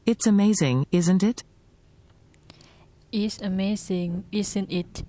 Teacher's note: When you're not sure of the answer, the intonation rises, just like in a real yes or no question. But when you are sure of the answer and you just want the listener to agree or confirm something with you, then the intonation falls